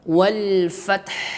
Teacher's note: Wal fa dia adalah hams. Ujung gigi seri atas kita menyentuh pada bibir bagian bawah